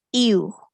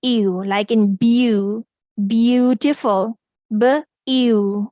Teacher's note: it's a gliding sound of two vowels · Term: diphthong